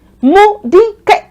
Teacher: So they all align with the mi tone.